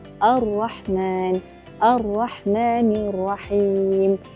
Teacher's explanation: Ha ada getaran tetapi tidak berlebih-lebihan. [muzik] Kurangkan pengulangan getaran tersebut.